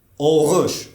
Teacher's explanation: фонемаи ӯ аз овозҳои садоноки лабӣ аст. доираи лабҳо дар вақти талаффузи он пайдо мешавад. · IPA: ɵː